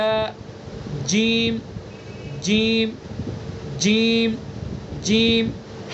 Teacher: ث زبان کی نوک ثنا علیہ کا کنارہ، ث ث ث ث ث ٹھیک ہے. جیم زبان کا بیچ اور اس کے مقابل اوپر کا تالو